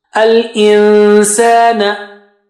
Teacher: Go close to the makhraj of sin and then take the sound out from your nose. Al-insana. Don't say al-insan.